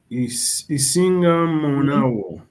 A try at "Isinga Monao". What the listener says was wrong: Well done.